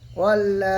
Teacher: ইল্লা মাউতা, ওয়াও লাম জাবার ওয়াল, লাম খাড়া জাবার লা, ওয়াল্লা, খাড়া জাবার আলিফ মাদ্দার সমতুল্য এক আলিফ টান দিয়ে পড়বো